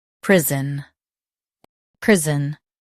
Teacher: Emphasize priz and soften un.